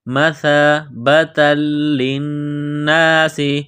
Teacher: نون مشدد ہے، غنہ کریں گے، آواز ناک میں چھپائیں گے۔ سین میں سیٹی کی آواز پیدا کرنا ہے، سین کو باریک کرنا ہے۔